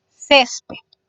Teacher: Césped tiene su sílaba tónica en la penúltima. Es ces. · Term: palabras graves